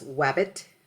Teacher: gliding where the r becomes a w and the L becomes a y or a w sound and that example given was wabbit for or yellow and there's